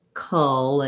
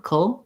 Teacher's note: Cull. Go as quickly as you can from the K to the L, keeping the back of the tongue down with a little bit of a schwa sound in there. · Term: syllabic L